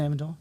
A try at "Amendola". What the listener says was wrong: I think there's another vowel in there.